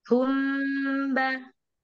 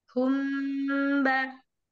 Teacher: ketemu dengan mim sukun bertemu ba maka tidak boleh buru-buru kita tahan dulu ada gunah yang dipanjangkan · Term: Ikhfa Syafawi